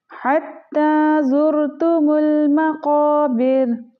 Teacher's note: क़ाफ मोटे हरूफ में से है तो क़ाफ को हमने मोटा करना है